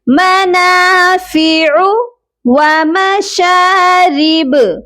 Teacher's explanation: یہاں پر عین ہے، اس کی ادائیگی درمیان والے حلق سے ہوگی